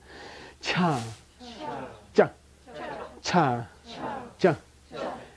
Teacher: this is very heavy aspiration a lot of air coming up